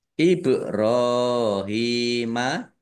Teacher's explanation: ba sukun bacaan qolqalah dibaca memantul ditampakkan pantulannya IB kemudian ro fathah berdiri Mad thi'i ha kasrah Ya Sukun